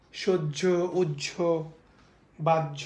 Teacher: হয়ের সঙ্গে যদি জ ফলা যুক্ত হয়, তাহলে হয়ের উচ্চারণ লোপ পেয়ে যাবে, হয়ের কোনো উচ্চারণ হবে না। আমি আবার বলছি, হয়ের সঙ্গে যদি জ ফলা যুক্ত হয় তাহলে হয়ের কোনো উচ্চারণ হবে না, যার কারণে হয়ের উচ্চারণ না হওয়ার কারণে এটার উচ্চারণ হবে হলো সহ্য।